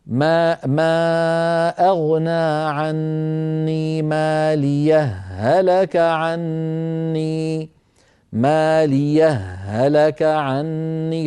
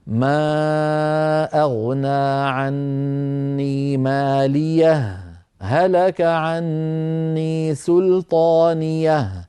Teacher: فيفصلون بين الهائين بسكتة خفيفة دون زمن التنفس